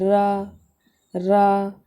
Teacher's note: आपका र बोल रहा है लुंठित व्यंजन आपका र है देखिए जब आप रा बोल रहे हैं ना तो आपकी जीभ देखिए ऊपर जाकर मुड़ रही होगी र र तो ऊपर की ओर जाकर मुड़ती है इसे लुंठित